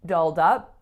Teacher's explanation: which syllable is the strongest here the second